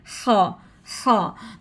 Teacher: near side parts of the throat, जो कि हमने अदनाए हलक से गले के शुरू वाले हिस्से से अदा करना है